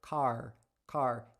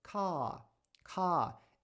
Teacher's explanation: no sotaque americano a gente tem uma característica muito marcante que é a pronúncia do R aquele r caipira · ele é feito de uma maneira bem suave um a a Na verdade é um alongamento que a gente fala da vogal